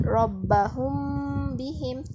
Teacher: Dia tak rapat macam kita, tak serapat sangat, tapi dia rapatlah bertemu antara dua bibir ni. Dua bibir kita ni bila menyebut rabbahum bihim, dia bunyi dengung. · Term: ikhfa syafawi